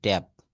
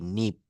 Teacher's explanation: পি যদি ওয়ার্ডের শেষে এবং সিলেবলের শেষে থাকে তাহলে অ্যাসপিরিয়েটেড হবে না। অর্থাৎ পি এর উচ্চারণ ফ এর মতো হবে না। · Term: নন অ্যাসপিরিয়েটেড